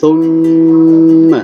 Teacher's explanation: ada mim, di atasnya ada tasydid, berarti gunnah ditahan ya.